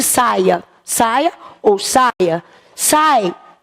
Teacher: Quem é forte? É o A vogal, o I semivogal.